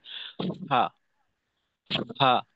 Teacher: অস্বাভাবিকভাবে বাতাস বের করে উচ্চারণ করলাম।